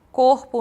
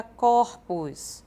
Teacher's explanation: uma mudança de timbre corpo no singular no plural fica corpos havendo uma mudança então da vogal tônica fechada para uma vogal aberta